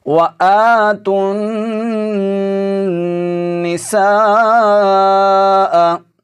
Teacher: یہاں پر جو مد ہو رہی ہے یہ مد متصل ہے، 4 الف کی مقدار تک ہم اس کو لمبا کر کے پڑھیں گے